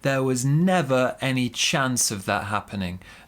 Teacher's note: Big stress on never, smaller stress on chance.